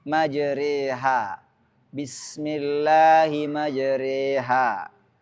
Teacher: membaca fathah yang miring ke kasrah atau alif miring ke ya. Bacaan ini hanya satu dalam riwayat Hafs, yaitu surah Hud ayat 41. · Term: imalah kubra